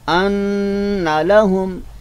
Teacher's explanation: नून मुशद्दद है, लिहाजा हम इसको एक अलफ की मकदार से जो है वो हम पढ़ेंगे